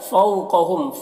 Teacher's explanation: فو میں واولین سے نرم آواز کے ساتھ جلد پڑھیں گے، اور قاف حروف مستعلیہ میں سے۔